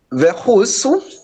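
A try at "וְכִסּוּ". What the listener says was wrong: Let's get that vowel correctly under the chaf.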